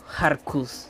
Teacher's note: Habrían unas vocales intercaladas ahí, unas vocales imaginarias, para hacer un poco más fácil la pronunciación. Entre la H y la R habría como una A, como un Har, y entre la K y la S habría como una U